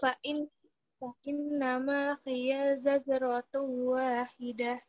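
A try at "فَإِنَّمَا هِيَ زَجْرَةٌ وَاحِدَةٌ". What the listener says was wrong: Kayaknya pendek. Fa innama hiya zajratun wahidah. Ma-nya 2 harokat. Ma-nya panjang 2 harokat. Ya-nya yang pendek.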